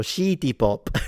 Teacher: the Japanese don't have the sound si, so it will turn into shi